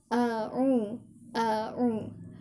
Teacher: Ketika hamzah maka dibuka mulutnya, ketika ain ditekan dan dialirkan. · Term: hamzah dan huruf ain